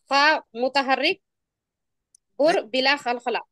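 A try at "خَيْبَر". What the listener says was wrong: اس کو خی پڑھے نا، سا کہاں پڑھے آپ؟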